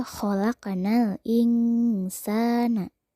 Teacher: Nun sukun bertemu sa, maka dibacanya harus samar, bunyi n berubah menjadi eng. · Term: ikhfa